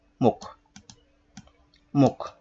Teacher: এই ম এর সাথে যে অটা রয়েছে সেই অটা ও হিসেবে উচ্চারিত হলো